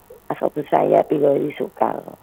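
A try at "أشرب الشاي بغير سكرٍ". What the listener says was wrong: Nah, sukarnya di kasroten Ibu ya. sukarin. Bi ghairi sukarin.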